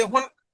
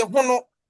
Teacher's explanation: the Fanti will have the word final vowel deleting, but the Asante P maintains the vowel